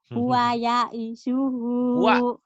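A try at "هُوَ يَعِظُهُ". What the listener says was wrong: Huwa ya'izuhu. Iya, huwa ya'izuhu. Bukan ya'isuhu ya, ya'izuhu. Huwa ya'izuhu.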